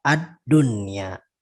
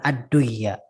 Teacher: tidak masuk idgham di situ, tapi ad-dunya tetap dibaca dengan idhar, ad-dunya, bukan ad-duya, ya, bukan ad-duya, ya, karena sebetulnya itu harusnya idgham, tapi dia dibacanya idhar karena pengecualian.